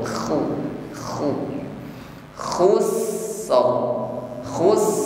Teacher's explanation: dengkur ya ngorok tapi dengkurnya lembut saja ya k KH khu Ada gesekan ditenggorokkan sehingga ada bunyi dengkur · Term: huruf ko